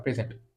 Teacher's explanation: আবার যখন প্রেজেন্ট পরেরটুকুকে যখন জোর দেওয়া হচ্ছে তখন সেটা হচ্ছে উপস্থিত হওয়া বা উপস্থাপন করা